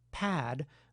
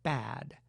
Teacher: a minimal pair of words in which the only difference is the voicing of the initial consonant. Gestural accounts would say that the articulation of these two words is nearly identical, with the only real difference being that the word “pad” must have one additional gesture compared with the word “bad”.